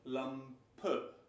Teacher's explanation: you hear something like a weak O umlaut, Lampe. And this is what we call the Schwa, a very weak E at the end of a word.